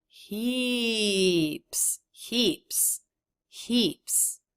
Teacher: I say heaps and both of us make that up down shape